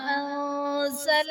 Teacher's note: انزل میں نون ساکن کے بعد حروف اخفا میں سے زا آ رہا ہے تو یہاں پر اخفا کا قاعدہ ہوگا، یعنی نون ساکن میں ہم غنہ کر کے پڑھیں گے۔